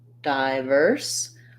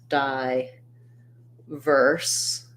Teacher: the dye is going to be shorter and the verse is going to be longer